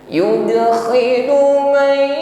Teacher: berdengung nun sukun bertemu ya idgham bi gunnah